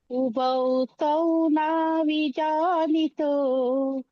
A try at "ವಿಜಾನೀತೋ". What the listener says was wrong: ವಿಜನೀತೋ ದೀರ್ಘ ನೀ ಇದೆ ದೀರ್ಘ ಇದೆ